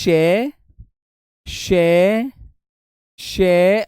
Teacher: इनको बोलते समय संघर्ष करना पड़ता है वे ध्वनियां वे ध्वनियां संघर्षी संघर्षी व ऊष्मीय होती हैं।